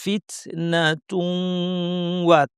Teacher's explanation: নুন সাকিন তানবিন পরে ইয়ারমুলুন, এই ৬টা হরফের যে কোনটা আসলে ইদগাম হয়, এর মধ্যে যদি ওয়াও আসে গুন্না সহ ইদগাম করতে হবে, তাহলে তুন ওয়াকে তু ওয়া পড়ব। তু বলার সময় নাক থেকে গুন্না হবে, ওয়া বলার সময় গুন্না শেষ।